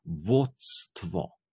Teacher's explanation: t pa s se zlimata skupaj v c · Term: zlitnika